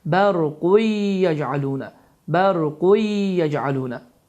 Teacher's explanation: idğam qaydası baş verir ki, burada tənvin damma deyilmir və səslənmir